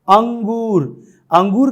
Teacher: नाक और मुंह दोनों से ही श्वास वायु हवा बाहर निकल रही है, अतः यह अनुनासिक है।